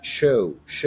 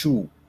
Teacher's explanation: ان دي اسمها show فيها diphthong o